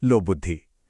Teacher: लोक प्लस बुद्धि में क की सख्त आवाज नरम होकर ग बन गई